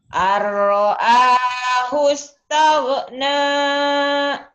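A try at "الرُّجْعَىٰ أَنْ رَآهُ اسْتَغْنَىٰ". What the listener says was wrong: Jangan tage ya. Jangan ada e-nya.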